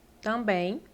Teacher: Quando você fala também, esse M, ele nasaliza o A, você fala tam.